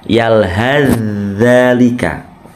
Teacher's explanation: Ini idgham mutajanisain, yaitu ada huruf yang sama makhrajnya dan sama sifatnya bertemu. Jadi fa-nya melebur menuju zal.